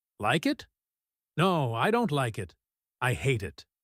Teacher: He stressed hate to show the opposite of like. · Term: contrastive stress